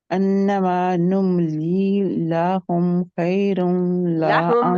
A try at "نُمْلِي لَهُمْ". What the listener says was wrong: लाहुम नहीं है, लाम के आगे अलिफ लगा के हम नहीं करना। लहुम।